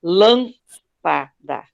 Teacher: você pronuncia a primeira sílaba, lâmpada, essa primeira é acentuada.